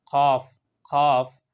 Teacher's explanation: কাফ তো এই কাফ এটা হইলো প্রথম বিন্দু যুক্ত যে কাফ এটা হইলো জিহ্বার বিলকুল গুড়ি সোজা উপরে তালুর সাথে লাগানোর পরে কাফ আদায় করা হয়